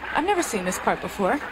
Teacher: Escute muito bem que você não vai ver ela pronunciando I've. Ela vai dizer, I never seen this part before.